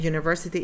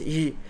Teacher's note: The first sound in university, it is y, and this sound it corresponds to a semi-vowel sound